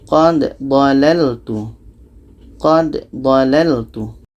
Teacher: Jangan dibaca qad dalaltu, tapi dibaca danya. Da mati qalqalah, ada pantulan.